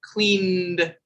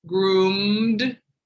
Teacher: voiced sounds at the end of the word cleaned you can feel it in your throat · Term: the d sound